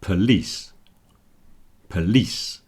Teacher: the po is contracted down to a p, police, police, and it ends in a s, not a sh.